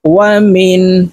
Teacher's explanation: পড়তে হবে কারণ নুন সাকিনের পরে ইজহারের হরফ হামজা আসছে তো এই নুনকে গুন্নাহ ছাড়া স্পষ্ট করিয়া পড়ব